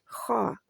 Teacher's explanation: حلق جو ہے آپ کا گلا جو ہے اس کے آخری حصے سے منہ کی جانب والے حصے سے خا نکلتا ہے